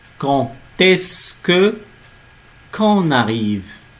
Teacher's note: quand est-ce que la prononciation de D devient T. On ne dit pas quand est-ce que, on prononce D, T. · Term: liaison